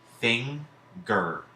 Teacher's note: So we hear an NG sound that associates with the N, and we hear the G sound that associates with that G.